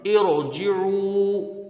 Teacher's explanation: ارجعو، حمزہ کو را سے ملا کے یہاں پڑھا جائے گا، را ساکن سے پہلے زیر عارضی ہے، را کو پر پڑھیں گے